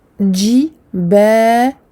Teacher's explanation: je donne au lem sa bayniyah, écoulement partiel du son